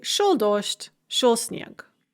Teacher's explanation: Note, by the way, the pronunciation of dождь and снег. We have word final devoicing. So the g in снег becomes k, and the the d in dождь becomes t.